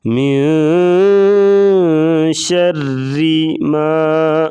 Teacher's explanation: را کے نیچے زیر ہوگی تو را کو باریک پڑھیں گے · الف خالی ہوگا، اس سے پہلے زبر ہوگی تو الف مدہ ہوگا، اسے 1 الف کے برابر لمبا کر کے پڑھا جاتا ہے